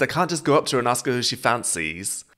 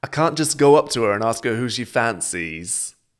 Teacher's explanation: Notice with the intonation and the emphasis, it's very musical. She goes up and then down.